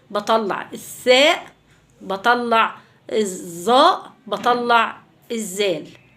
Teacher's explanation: الثاء اللي هي طرف اللسان أو اللسان ما بين الأسنان